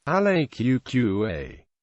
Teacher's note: It sounds like a heavy object being lifted some considerable distance before being placed firmly into position. The strongly aspirated H sound appears to be lifted by the elongated A